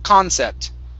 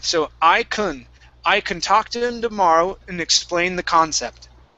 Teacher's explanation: the stress is at the beginning here. Instead of concept, it's concept.